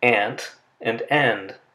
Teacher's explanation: The nasal sound n agrees in the place of articulation with the stop that follows, the t or the d. They're both made using the same articulator on the alveolar ridge.